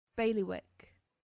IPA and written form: ˈbeɪlɪwɪk (bailiwick)